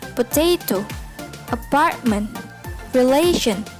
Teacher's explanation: the middle syllable is stressed